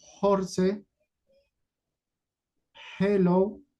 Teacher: suena como una J suave aspirada o exhalada